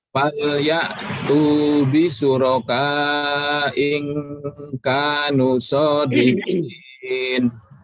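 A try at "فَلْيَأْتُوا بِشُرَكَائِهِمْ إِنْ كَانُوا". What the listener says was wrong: Harokatnya jangan hilang Pak ya. Kalau dibaca atau diwasalkan, harokat jangan hilang. Am lahum syuraka falyatu bi syurakaihim in kanu shadiqin.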